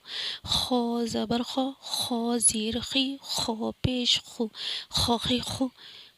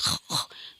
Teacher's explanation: خراٹے کی طرح جیسے ہم کہیں گے نا خ، تو اس طریقے سے آرام سے نکلے گا، خ موٹا بھی ہو جائے گا اور خراٹے کی طرح خ کر کے بھی نکل جائے گا۔ خا زبر خا، خا زیر خی، خا پیش خو، خا خی خو۔